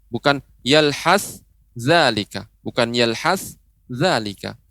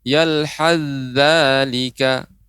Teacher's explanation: Jadi sa-nya itu menghilang, dilebur.